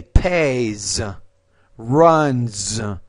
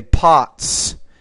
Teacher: So the one thing here you want to pay attention to is the S. The S after a consonant, a voice consonant, it's going to be more like a Z. So if I say pays, runs, but then I'm going to say pots because the T is a voiceless consonant, so then the S will sound like an S.